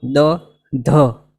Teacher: આ ધ બોલવા માટે પણ પ્રાણ પૂરવું જરૂરી છે